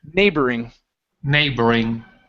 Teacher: our stress is at the very beginning